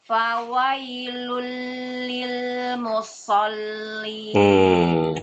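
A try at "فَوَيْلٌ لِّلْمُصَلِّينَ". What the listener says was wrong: Perhatikan ibu, musol yang ada tasydidnya lam, bukan sod. Fawailul lil musallin, bukan musol salah. Masih ada tasydidnya itu.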